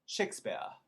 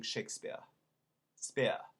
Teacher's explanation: leaving off the r